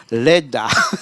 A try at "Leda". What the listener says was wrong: Non, on ne prononce pas le A, oui, ça fait LED.